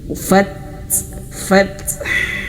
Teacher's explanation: sifatnya yaitu dia mengalir nafas dan juga dia syiddah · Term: huruf ta